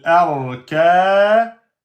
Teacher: Hamzatul wasl si on ne prononce pas. Ra soukoun précédé de fatha, c'est donc emphatique.